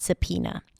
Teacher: You start with an S sound, then a schwa, sa, then P as pizza. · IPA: /səˈpiːnə/